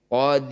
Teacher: harus dibaca tarkik atau tipis tempelkan ujung lidah di Pangkal gigi seri Qodir mendaratnya di pangkal gigi seri kita ulang lagi ya tabarakalladzi